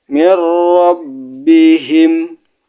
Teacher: ra-nya ditekan, nunnya dilebur ke ra. Namanya idgham bila gunah.